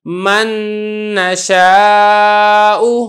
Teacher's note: اگر نون ساکن کے بعد اگر نون آ جائے تو پھر اس صورت میں بھی ادغام تام ہی ادا ہوتا ہے